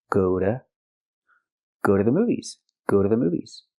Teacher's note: The T is pronounced like a fast D.